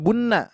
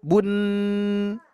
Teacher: gunahnya saja yang diambil karena sukun